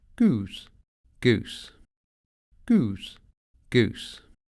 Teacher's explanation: А вот гласный «у» был задним, а в современном произношении он съехал вперед и звучит как гласный «ы» в русском слове «люди».